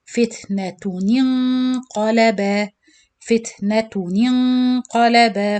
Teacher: Of course, the noon kasra you join with noon sakin and the noon followed by qaf. So this is إخفاء with heavy gunna. So you do the gunna before you pronounce the qaf.